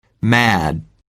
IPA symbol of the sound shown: æ